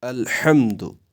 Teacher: الحمد یہ ہا جو ہے یہ ہمیں وسط حلق سے نکالنا ہے